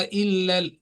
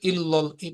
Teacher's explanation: ये जो इल्ला है ये बारीक पढ़ा जाएगा, इसको मोटा नहीं पढ़ना